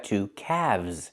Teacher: The L is silent, and we pronounce the V sound with vibration